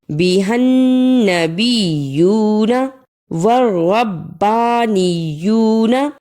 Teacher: بِهَا النَّبِيُّونَ بازر بی، ہا زبر نون، ہن نون زبر نا. یہاں نون پر شد ہے، اس لیے ہا کو نون سے ملانا ہے